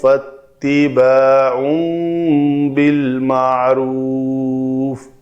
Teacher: تو تنوین کے بعد با ہے تو اس تنوین کو میم سے بدل کر پڑھیں گے تو مصحف میں یہاں پہ ایک میم لکھا ہوا ہوتا ہے. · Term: اقلاب کا قاعدہ